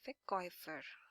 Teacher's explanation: So Verkäufer, now this A and U combination, these are the diphthongs, two sounds together. So we pronounce this as Oi, Verkäufer.